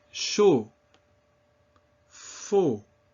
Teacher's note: It's that same closed O sound that we saw often with the letter O.